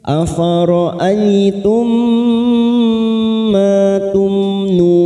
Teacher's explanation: Afara'aitum ma tumnun, afara'aitum mim sukun bertemu mim idgham mimi kita mim sukun bertemu mim idgham mimi kita tekan 3 ketuk siap masuk ke huruf mim.